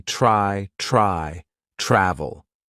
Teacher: the consonant blend TR is going to be more of the CH sound combined with R